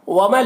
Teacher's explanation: नून को लाम से मिलाकर बगैर गुन्ना के पढ़ेंगे, इसको इदगाम ताम कहते हैं।